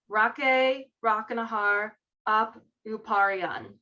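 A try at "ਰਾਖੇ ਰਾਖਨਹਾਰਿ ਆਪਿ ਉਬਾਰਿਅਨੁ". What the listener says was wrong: Ape Uparian. There's a little A after the P. Ape Uparian.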